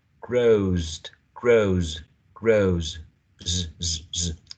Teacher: And as this a final sound is voiced, then the third person singular marker is also voiced